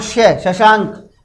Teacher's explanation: इसके अंदर आपके तालव्य वर्ण है, तो तालु से इसका उच्चारण होता है